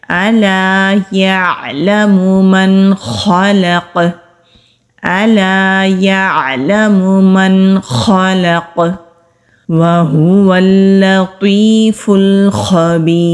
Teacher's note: واو ہونٹ گول کر کے ادا کریں گے۔ یہ ہا حروف ہلکی ہے، جو ہمارا حلق کا سینے کی طرف والا حصہ ہے، وہاں سے یہ ہا ادا ہوتا ہے۔